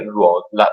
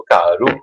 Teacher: Allora, le parole, se prendiamo una parola come ruota, la ruota si chiama ruota, la lettera R all'inizio è sempre pronunciata doppia, però all'interno di una parola possiamo trovarla anche semplice, come caru.